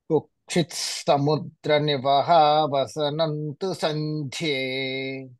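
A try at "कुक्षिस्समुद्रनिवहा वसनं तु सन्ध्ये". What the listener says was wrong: మీది తకారం కూడా తెలుస్తుంది. తకారం వద్దు, కుక్షిస్స అంతే. కుక్షిత్ తకారం కూడా లైట్ గా తెలుస్తోంది. తకారం లేకుండానే కుక్షిస్ సముద్ర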